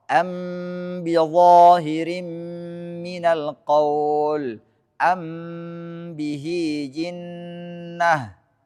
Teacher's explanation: Ketika mim bertemu dengan ba tidak dibuka bibirnya, dua bibirnya hingga ia membaca huruf ba-nya. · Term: indhimam